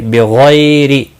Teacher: بغیر غائن مستعلیہ ہے، پر پڑھا جائے گا، غی یالین بھی ہے، تھوڑا نرمی کے ساتھ آدھے الف کے برابر کھینچ کر پڑھیں گے، را زیر کی وجہ سے باریک پڑھا جائے گا۔